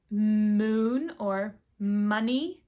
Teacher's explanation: So, the m is made at the lips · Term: nasal consonants